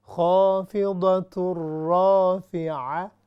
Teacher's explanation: ہا بالکل نچلے حلق سے آتی ہے اور عین مڈل سے آتی ہے